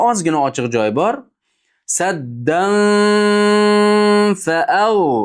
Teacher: Saddan fni tagiga boradi, ammo fga mahrajga yopisha olmaydi. Ozgina ochiq joy bo'ladi. Saddan, qarang, ozgina ochiq joy bor.